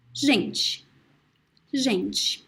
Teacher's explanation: So the E sound is very weak at the end.